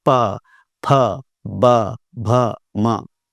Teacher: प जो है ओष्ठ वर्ण है, उसमें ओठों का सहारा ले जाता है।